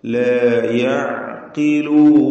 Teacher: ബൽ അക്സറുഹും ലാ യഅഖിലൂൻ, യഅ എന്ന് പറയുമ്പോൾ ആയിനിന്റെ ഉച്ചാരണം, വസത്തുൽ ഹൽഖ് തൊണ്ടയുടെ മധ്യം, വ്യക്തമായി ആയിൻ ഉച്ചരിക്കുക. ഖാഫിന് ഏറ്റവും കുറഞ്ഞ തഫ്ഖീം കൊടുക്കുക, കാരണം കസ്ര വന്നിട്ടുണ്ട് മക്സൂറത്താണ്.